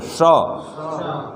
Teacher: तालव्य श, तालु में लगाएंगे श